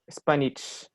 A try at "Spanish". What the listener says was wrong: Ya, cuidado. Empieza siempre con ese. Spanish.